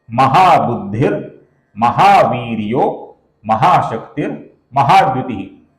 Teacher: अब यहां पर देखिए दोस्तों, यह पहला नाम है महाबुद्धि। यहां पर महाबुद्धि के विसर्ग के आगे म आने के कारण विसर्ग का यहां पर र हुआ है